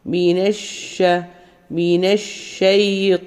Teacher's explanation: ഷീനെ നമ്മൾ വായിക്കുള്ളിൽ sound spread ആകുന്ന രീതിയിൽ ഇങ്ങനെ മൊത്തത്തിൽ സ്പ്രെഡ് ആകുന്ന രീതിയിൽ പറയാം ഇഷ് എന്നുള്ള സൗണ്ട് മിനഷ മിനശൈത്താനി ത് ഉയർത്തി പറയാം നല്ല ഹെവി അക്ഷരമാണ്